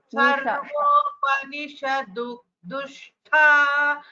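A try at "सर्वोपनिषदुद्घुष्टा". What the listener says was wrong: So it is here Udghushta. It is a Gha. It is Gha. Nishadudghushta.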